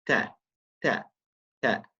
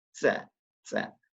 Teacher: There's no S. There's no whistling sound.